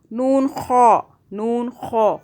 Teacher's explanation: خا کو موٹا کرنا ہے